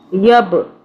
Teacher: با پہ کلکلا کریں گے، جھٹکے سے پڑھیں گے